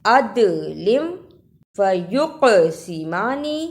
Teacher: تینوں میں دال، قاف، با جزم کی صورت میں حروف قلقلہ ہیں، یعنی ان حروف کو ہلا کر پڑھا جاتا ہے